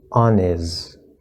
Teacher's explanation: most likely the n is going to erase the h and connect on is